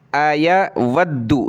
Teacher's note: दाल को सख्त करें तशदीद की वजह से